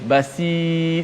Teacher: Kalau kita nipiskan sad baris bawah dia automatik jadi sin.